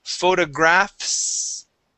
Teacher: right after the F sound you need to make an S sound